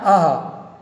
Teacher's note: अह, इसका उच्चारण होता है अह, अ के बाद में दो बिंदी है, इसको संस्कृत भाषा में इसको विसर्ग बोलते हैं। तो इसका जो उच्चारण होता है ह से होता है